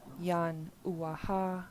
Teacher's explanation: this period in the middle of the word yan uaha is called a glottal stop, and it tells us to stop the air in our throat. So instead of saying yan uaha, we stop the air and say yan uaha.